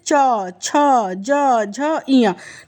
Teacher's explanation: तो इसका उच्चारण स्थान फ्रेंड तालू है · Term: च वर्ग